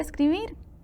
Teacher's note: Aguda, porque lleva el acento en la última sílaba